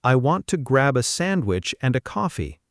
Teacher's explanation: all shrink down to quick schwa sounds, almost disappearing between the important words